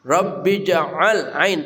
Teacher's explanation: ain tengah kerongkongan